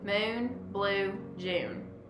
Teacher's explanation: In words with the vowel sound lowercase u, it is drawn out and makes a more tense vowel sound.